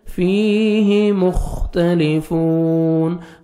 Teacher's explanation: خا کو اچھی طرح ادا کریں گے، موٹا کر کے پڑھیں گے